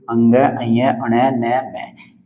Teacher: ये बेसिकली नासिक के व्यंजन आपके होते हैं नासिका के द्वारा बोले जाते हैं · नाक से और मुख से दोनों से वायु निकलते है यानी कहने का मतलब यह है नाक की सहायता भी यहां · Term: नासिक्य